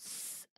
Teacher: the second sound is s sound which is a voiceless sound listen to the sound s it's like a sound snake makes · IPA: /s/